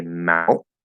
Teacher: This is a common example used to show where we might have a glottal stop T inside of a word, because that's usually what we do. We say mount with a glottal stop, and then we'll do n.